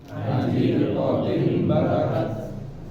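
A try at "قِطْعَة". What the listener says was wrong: Perhatikan setelah ko ini, setelah kof itu huruf to ya, bukan huruf ta, huruf to.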